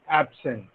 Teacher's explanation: absent is an adjective when there is a stress on the first syllable and absent sent absent when the stress is on the second